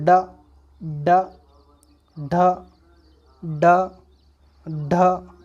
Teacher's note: तो एकदम जबान हमारी नीचे हट रही है, तेजी से साउंड कर रहा है। डा, ढा, यानी एकदम से ऊपर जहाँ टकरा रही है और एकदम हट रही है, वो हमारा उत्क्षिप्त व्यंजन होगा।